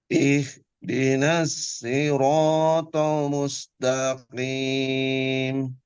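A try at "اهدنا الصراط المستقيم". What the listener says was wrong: Ro-nya kurang panjang. Kurang 2 harokat.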